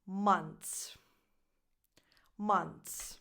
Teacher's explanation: when you add the S, the th becomes so soft that you don't even hear it anymore. Months. So even if I'm making the movement for the th, it doesn't really come out.